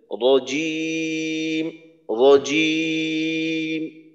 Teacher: জিম উচ্চারণ হবে জিহ্বার মধ্যখান একেবারেই মধ্যখান লাগানোর চেষ্টা করবেন